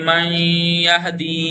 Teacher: نون ساکن کے بعد یا آ جائے تو پڑھیے من یہدی. دیکھیں تھوڑا کھینچا بھی اور نون ناک سے ادا کیا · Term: ادغام غنہ